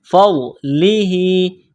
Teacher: فا کو ضاد کے ساتھ ملانا ہے، ضاد کو موٹا کرنا ہے